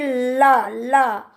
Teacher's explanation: जिसके उच्चारण में जो हमारी जीभ होती है वो मसूड़ों को छूती है। बोलते समय ला ला मसूड़ों को छूती है और हवा जो है आसपास से निकल जाती है, उसे पार्श्विक व्यंजन कहते हैं।